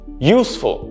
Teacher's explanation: i'm stressing on use not full